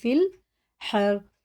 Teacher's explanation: یہ الف چھوڑ دیں گے، اور یا بھی فا کو سیدھا لام میں لگائیں گے